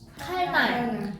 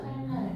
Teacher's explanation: 쉽게 말하면 그냥 칼날이라 하죠 우리는. 니은이 비음인데 유음, 리을로 바뀌잖아요. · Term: 유음화